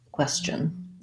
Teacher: A little bit of a schwa before our N, so it would sound like question. You can think of this as having a little bit of a T sound, but really that T is part of the CH sound of chun, question.